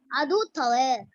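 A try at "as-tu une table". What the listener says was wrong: Atu tale. It's not adu. Atu, ta.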